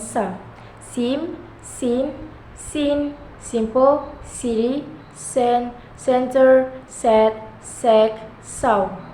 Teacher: Voiceless alveolar fricative sound